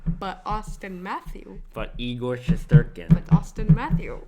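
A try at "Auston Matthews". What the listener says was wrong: Why are you not saying the S his name?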